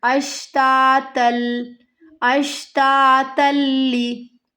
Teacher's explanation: ता को लाम के साथ मिलाना है। इदगाम बिला गुन्ना।